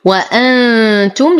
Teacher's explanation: نون ساكنه وبعدها التاء فالحكم اخفاء مع غنه كامله مرققه